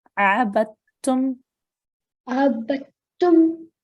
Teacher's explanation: Now here you can see the dal with the sukoon, but because the next letter has a shadda on it, we ignore the dal with the sukoon and we join the ba straight to the ta with the shadda